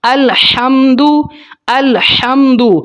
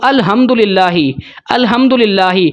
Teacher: ہا جو ہے وہ حلق کے درمیانے حصے سے ادا ہوتی ہے، ٹھنڈی آواز اس کی آتی ہے